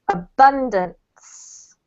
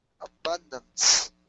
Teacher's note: The emphasis is on the second syllable, so it's abundance.